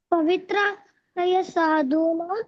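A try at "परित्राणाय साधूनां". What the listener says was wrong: పవిత్ర కాదు, పరిత్రాణాయ. పరిత్రాణాయ.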